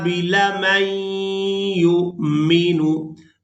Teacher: मीम को या मुशद्दद के साथ मिलाएंगे, नून साकिन को छोड़ देंगे